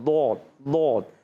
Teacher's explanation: یہ اس کا جیسے پیچھے والا, ایک زبان آگے والی ہوتی ہے ایک پیچھے والی. پیچھے جو بغلی کنارہ ہوتا ہے موٹا موٹا, وہ اوپر کی داڑھوں کی جڑوں میں لگتا ہے